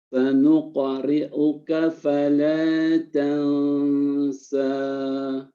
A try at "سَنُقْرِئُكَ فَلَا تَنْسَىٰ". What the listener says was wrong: Boleh untuk dirapatkan kembali lisannya kepada langit-langit. Dan keluar dia getaran yang terjepit karena begitu dekatnya jarak antara lisan dengan langit-langit. Fala tansa.